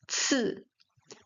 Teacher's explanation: the tip of the tongue touching the back of the teeth, the [snorts] upper back of the of the teeth.